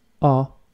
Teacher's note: The H is completely silent and you do not pronounce it. So the word O is pronounced like the letter O.